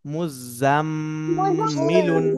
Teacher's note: খেয়াল রাখতে হবে গুন্নাহ এর পরিমাণ যেন এক আলিফ পরিমাণ হয়, অর্থাৎ 1 সেকেন্ডের কম যেন না হয়, বেশি হতে হবে, ঠিক আছে?